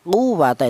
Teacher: Quwwata itu ditekan ya, itu ada wawu bertasdid yang didahului huruf yang berharokat dhammah. Quwwata ditekan cara bacanya.